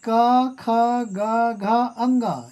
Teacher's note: क, ख, ग, घ, अंग ये पांचों कंठ्य व्यंजन कहलाते हैं। इनका उच्चारण कंठ से होता है।